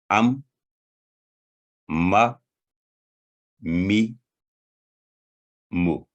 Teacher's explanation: دونوں ہونٹوں کے خشک حصہ کو آپس میں ملانے سے یہ حرف ادا ہوتا ہے